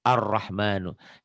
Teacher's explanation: Jangan al, tapi ar. L-nya nggak dibaca.